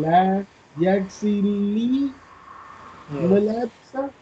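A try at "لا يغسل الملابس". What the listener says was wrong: La yaxilil mulabisa. Lil. Join lam with lam. Lil.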